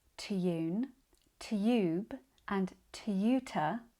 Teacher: in careful RP words like tune tube and tutor tend to keep a more traditional tye sound